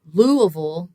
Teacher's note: the punch is on that first syllable we'd call that the stressed syllable the other two are not stressed so · So in English in particular, it's really common for us to take multisyllable words like Louisville and sort of centralize or reduce, in some ways, people say, some of the vowels that don't have the stress. So in a word like Louisville, the punch is on that first syllable. We'd call that the stressed syllable.